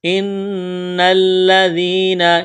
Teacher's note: نون مشدد ہے، غنہ کریں گے، آواز ناک میں چھپائیں گے۔ ان الذین، اسلام میں سختی کریں گے، ذال کو نرم کرنا ہے، یا مدہ ہے یعنی یا ساکن سے پہلے زیر ہے، حروف مدہ یا ہے تو ایک الف کے برابر اس کو کھینچنا ہے۔